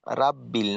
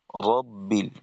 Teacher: র জবর তো র হবে, র জবর কিন্তু রা না, রাব্বিল না, রব্বিল।